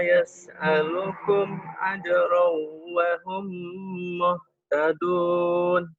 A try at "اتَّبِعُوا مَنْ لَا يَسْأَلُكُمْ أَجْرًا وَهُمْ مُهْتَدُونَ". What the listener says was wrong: Bagus cuman ketahannya di sini aja nih, di yas'alukum. Harusnya ittabi'u man la yas'alukum ajran wa hum muhtadun. Di yas'alukum agak ketahan.